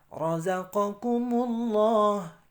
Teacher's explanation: Kalimat Allah dibaca tafkhim atau tebal karena didahului dhammah.